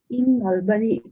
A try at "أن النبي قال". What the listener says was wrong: أن النبي قال Okay, that's the on top of alif we have fatha. So أن النبي صلى الله عليه وسلم قال.